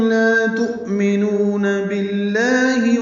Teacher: تؤمنون میں حمزہ ساکن جھٹکے سے ادا ہوگا